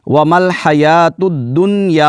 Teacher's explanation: یہاں پر چونکہ کلمہ ایک ہے، یعنی نون اور یا جو ہے حرف یرملون وہ ایک ہی کلمہ میں ہیں، تو یہاں پر ہم نے نون کو یا میں ملانا بھی نہیں ہے اور غنہ بھی نہیں کرنا